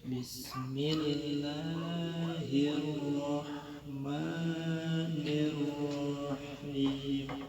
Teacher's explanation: Ro dibunyikan secara tafkhim berbaris di atas, maka bacaan tebal, pangkal lidah diangkat.